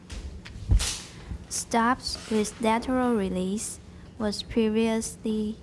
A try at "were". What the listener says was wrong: Oh, you don't need that, but I think I heard was instead of were.